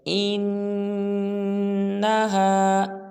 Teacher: انہ پہ غنہ کریں گے، ان کے ناک میں آواز لے جائیں گے